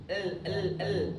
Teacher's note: Lam itu dia di ujung lidah nempel ke langit-langit ke awal gigi gusi.